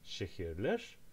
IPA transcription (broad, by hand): ʃehirler